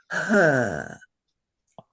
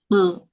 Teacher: What it does to a vowel is it adds a rough breathing sound.